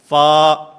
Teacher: اوپر والے 2 دانت جن کو ثنایا علیہ کہا جاتا ہے، ان ثنایا علیہ کے کنارے جس وقت نیچے والے ہونٹ کے اندرونی حصے سے ٹکراتے ہیں تو اس سے فا ادا ہوتا ہے